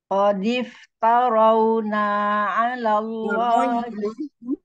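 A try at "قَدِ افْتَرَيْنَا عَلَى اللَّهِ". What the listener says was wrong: Taroina, bukan tarawna. Taroi.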